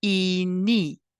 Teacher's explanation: these vowels are made with your tongue in a high and front position in your mouth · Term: high front vowels